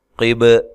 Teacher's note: قاف کو موٹا، با پہ قلقلہ۔